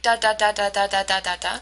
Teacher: every single syllable carries the same weight okay so notice how it's uh quite choppy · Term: syllable time languages